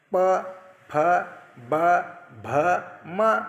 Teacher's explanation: ओठाच्या वापराशिवाय ज्या वर्णांचा उच्चार होत नाही त्यांना ओष्ठवर्ण म्हणतात